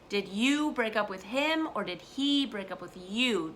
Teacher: So you want to emphasize the pronoun when you say that.